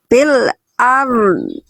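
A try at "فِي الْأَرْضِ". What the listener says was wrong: Itu udah ada dotnya, tapi cuman dotnya belum terlalu bunyi, terus sifatnya belum ngalir. Gitu, masih dominan ro-nya. Jadi nanti yang dominan itu bunyi dotnya. Sekali lagi, karena ro ini sifatnya tawasud. Kalau dot itu sifatnya rokhawah.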